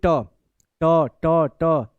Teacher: जीभ जाके ऊपर लिंटर पे बीच में लग रही है। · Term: मूर्धा